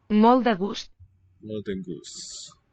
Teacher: a final T is silent where other consonants are still sounded